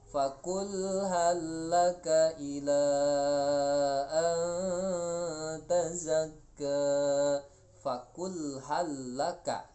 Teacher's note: lam yang pertama mati masuk ke lam selanjutnya, yang biasanya ditasdidkan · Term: idgham mutamatsilain